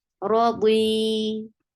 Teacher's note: You will give sukoon at the end, and look what it is now. It is a combination of long vowel because ya sakina followed by kasra, and it will be 2 counts long now.